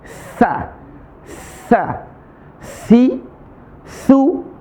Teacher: ujung lisan ketemu gigi seri atas ujung gigi seri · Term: tsa